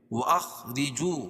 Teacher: خا کو پر پڑھیں گے، را باریک پڑھی جائے گی، کیوں؟ را کے نیچے زیر ہے